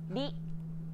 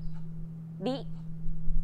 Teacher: This character isn't pronounced using an English R sound at all. うり It's like a mixture between an R and an L sound. り There's no such sound in English, but most people would transcribe this using the letter R because that's the closest equivalent there is in English.